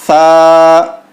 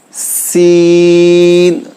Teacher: ایک ہے سا جو زبان باہر نکال کے بولنا ہے، اور سین جس میں سیٹی کی آواز ہونی چاہیے